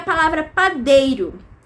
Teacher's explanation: A maior intensidade vai estar em dei. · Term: sílaba tônica